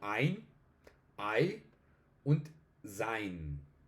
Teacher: Los dos diptongos, EI y AI, lo estoy enunciando en español, pues funcionan como AI.